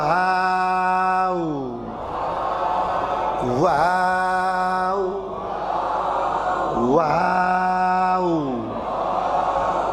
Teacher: इस हरफ को अदा करने के लिए हमें होट दो बार गोल करना एक बार शुरू में और एक बार आखिर में वा वा वा वा वाऊ वा खींच कर बोलिए वा सब